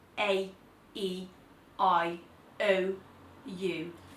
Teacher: all of the vowels are nasalized, so slightly up here in the nose, like sounding a tiny bit like you've got a cold